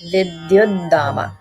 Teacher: So in Vidyuddhama, it's actually not a Mahaprana. It's just a regular da sound, regular da.